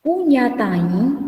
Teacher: Puñataín es nasal porque aquí lleva una consonante nasal y lleva una vocal nasal